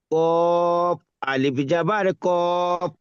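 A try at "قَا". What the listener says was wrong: কফ হবে না, ক। ক।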